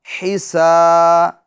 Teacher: یہ ہا ہے بڑی والی ہا، درمیان حلق سے ادا ہوتی ہے